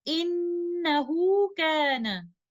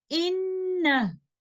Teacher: upon stopping, we will drop the lengthening of ha al-dhamir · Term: drop the mad